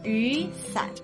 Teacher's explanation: in the case of the umbrella, the first character changes tones to the second tone